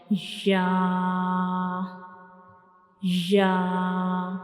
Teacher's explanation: When we pronounce Ya, we will touch the center of the tongue to the upper hard palate. So this is the center of the tongue and it will touch the upper hard palate to pronounce Ya, like Ya, Ya.